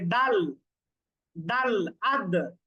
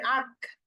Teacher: তার মাখরাজে শক্ত ভাবে হচ্ছে ধাক্কা লাগার কারণে আওয়াজ বন্ধ হয়ে যায় এবং আওয়াজ শক্ত হয় এগুলার নাম হচ্ছে সিদ্ধা সিদ্ধা মানে হচ্ছে কঠিন মানে কঠিন করে